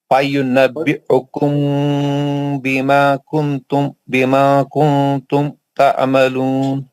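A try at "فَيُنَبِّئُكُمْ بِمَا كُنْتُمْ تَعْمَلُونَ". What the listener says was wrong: بما کنتم تعملون، اخفا کا غنہ تو صحیح کر لیجئے. تعملون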